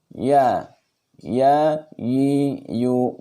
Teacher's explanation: Kemudian huruf ya, tengah lidah sejajar dengan langit-langit. Tengah lidah ya, lidah yang bagian atas punggung itu ya.